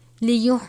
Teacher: اس کے اوپر بڑی مد ہے، اس کی مقدار 5 الف کے برابر ہے